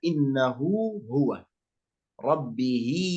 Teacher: هذا نقول عنه مد صلة صغرى يمد حركتين